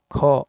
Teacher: ख अघोष महाप्राण है।